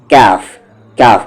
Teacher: اور یہ کاف زبان کی جڑ تالو کے سخت حصے سے